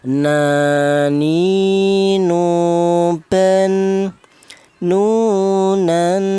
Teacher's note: huruf nun ini keluarnya huruf berasal dari ujung lidah menyentuh langit-langit mulut